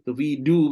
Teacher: Ubah huruf dha jadi dal. Biasa ni. Sebab hujung lidah dha tu sama dengan dal.